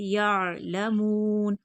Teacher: आइन हर्फ हल्की हलक से अदा होगा। या नहीं पढ़ेंगे, हमजा नहीं है, आइन है। यअलमून, मीम को खींच कर पढ़ेंगे, आगे वाव मद्दा है।